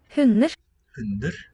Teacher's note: The D seems to drop out.